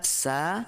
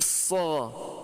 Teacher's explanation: Sin tipis, istifal. Sod tebal. Sa menjadi so.